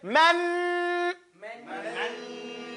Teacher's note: You hear the air that you're holding in your nose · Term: Ghunnah